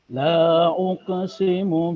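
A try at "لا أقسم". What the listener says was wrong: La kurang panjang. La uqsimu. Uqo, jangan uke. Uqo.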